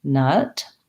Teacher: the relaxed schwa sound by itself keep your jaw fairly closed and relax the tongue